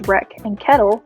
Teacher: in the californian dialect the vowel sound of epsilon is beginning to sound like ash